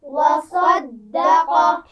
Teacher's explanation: صاد اور قاف کو موٹا پڑھا جائے گا، وصدق، بیچ میں دال باریک ہوگا، دال کو موٹا نہیں پڑھنا